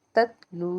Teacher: लनल किताब ता ता जबर तत ला व पेश लू ततलू वाव साकिन से पीछे पेश था तो यहां पर इसको हमने एक अलिफ के बराबर खींच के अदा किया